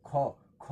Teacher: ख एक ऐसा ध्वनि है जो महाप्राण भी है अघोष भी है कंठ भी है और स्पर्श व्यंजन है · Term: महाप्राण ध्वनि